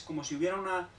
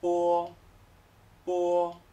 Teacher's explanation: Si os fijáis, aunque termino con una O, como en español, pero voy hacia ella, voy hacia esa O, desde los labios un poquito más pequeños. Por lo tanto digo que es como si hubiera un comienzo de U muy ligero, y luego ya voy hacia la O.